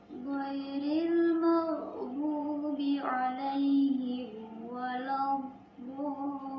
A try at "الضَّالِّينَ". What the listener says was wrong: Doknya agak sedikit dipanjangkan ya. Itu kan mad lazim ya, 6 harakat kan. Memang yang paling sulit itu mengucapkan makhraj dho gitu ya. Jadi dho itu cara mempraktekannya itu lidah kita itu bukan ke depan, jangan waladho. Harusnya ke pinggir.